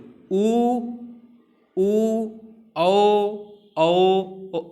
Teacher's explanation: हमारे ओष्ठ की जो स्थिति होती है वो गोल हो जाती है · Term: वृत्ताकार